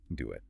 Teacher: To get from the U vowel to the I vowel, we add a tiny W sound. Do it. It's subtle, but it's there, and it makes the speech smoother. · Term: intrusive linking